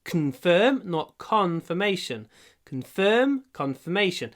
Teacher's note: в этом слове con, первый слог, имеет второе ударение. Ну, меньше, но все равно есть. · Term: Secondary stress